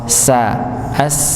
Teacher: Huruf sa ujung lidah bertemu dengan gusi bawah